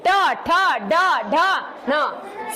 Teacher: सब में जीभ क्या कर रही है? तालवे से ऊपर टकरा रही है बार बार।